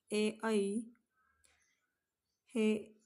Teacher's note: संयुक्त स्वर आहेत. कारण कंठ प्लस तालू या ठिकाणामध्ये यांचा स्पर्श होत असल्यामुळे यांना कंठतालव्य असे म्हणतात.